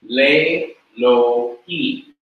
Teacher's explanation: But what happens further is the Aleph quiesces. That is, it loses its consonantal character by becoming silent. And when it becomes silent, the Katef Segol, or the composite shua, is removed so that it doesn't have any shua or any vowel underneath it when the Lamed comes before it. · instead of the segol remaining a segol, which is a short E sound, it lengthens and becomes a long E sound, so that it has to change to what is called a sere, a long E sound.